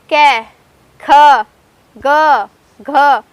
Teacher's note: कै वर्ग का उच्चारण कै को बोलते हैं कंठ से। जो हमारा कै वर्ग होता है उसे हम बोलते हैं कंठ से